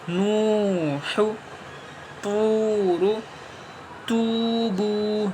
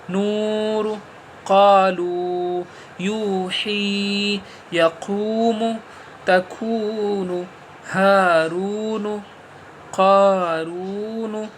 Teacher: قا کھینچے گا، رو کھینچے گا، نون نہیں کھینچے گا